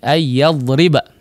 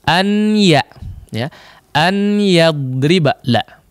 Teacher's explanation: Nun sukunnya tidak terucap lagi atau nunnya tidak terucap secara lisan lagi. Ya. Yang tertinggal hanya si gunnahnya saja kemudian dipanjangkan. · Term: idgham bi gunnah